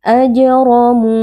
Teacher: Huruf ro dibaca tafkhim atau tebal karena huruf ro di sini berharokat fathah.